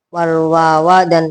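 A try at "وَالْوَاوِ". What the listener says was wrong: Wal wawi, orang bil fa'i wal Nah itu wawi membaca wawa.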